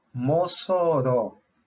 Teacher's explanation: Mossoró e o timbre é aberto